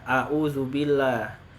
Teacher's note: Nah, berikutnya nih huruf Ain. Huruf Ain kesalahannya adalah diubah menjadi huruf hamzah.